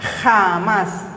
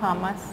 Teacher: La J se pronuncia en el velo del paladar, en el español tradicional de España y de otras regiones de América